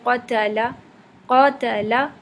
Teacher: قا موٹا ہے، تا باریک ہے، لام بھی باریک ہے